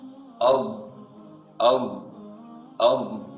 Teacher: Sifat yang dimiliki huruf dad adalah al-istidalah, terdengar memanjang, dan kita akan menggunakan lidah kita dari awalnya sampai ujungnya.